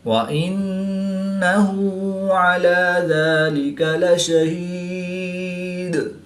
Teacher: دال کی دو پیش کو وقف کی حالت میں ساکن کریں گے تو یہاں پر وقف کی حالت میں قلقلہ صغریٰ کر کے پڑھیں گے